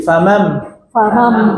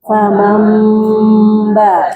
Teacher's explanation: Nah, jadi nunnya dirubah menjadi mim.